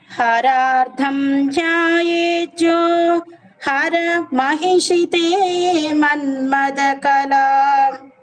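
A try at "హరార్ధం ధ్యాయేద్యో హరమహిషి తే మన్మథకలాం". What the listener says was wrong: హర దగ్గర కూడా కామా పెట్టుకోండమ్మా, చిన్న పాస్ ఇవ్వాలి అక్కడ, చిన్న కొంచెం. హరార్థం ధ్యాయేద్యో హర మహిషితే మన్మథ కలాం,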